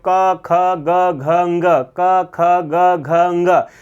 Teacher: हम इनका उच्चारण करते हैं तो मुख विवर में जीवा कहीं पर भी स्पर्श नहीं कर रही है। सिर्फ उदर में से हवा निकली फेफड़ों को प्रभावित करते हुए किसको प्रभावित कर रहा है? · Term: कंठ